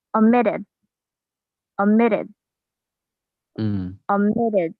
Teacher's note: the t sound also sounds like a d